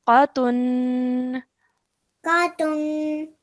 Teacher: you're ending with the sound of noon, and you're stretching that nasal sound at the end for 2 seconds because remember your rule of nasalization.